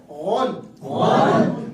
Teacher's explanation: غین کی آواز حلق کے آخر سے نکلتی ہے غون, ازوال دانتوں کو کھول کے ادا کرتے ہیں غون.